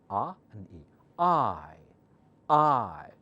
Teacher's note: it's a vowel but it's a combination of two vowel sounds